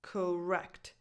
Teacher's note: So the first vowel is just a schwa. It has no definition.